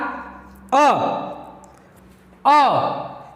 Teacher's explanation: ठीक है, क्या है कि ह्रस्व स्वर जो है इसको बोलने में हमें कम से कम समय लगेगा, बहुत जल्दी से झटके में बोला जाता है